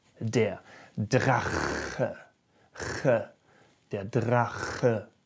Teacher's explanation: if the CH is connected to vowels like A, O, or U, then you can surely use that harsher sound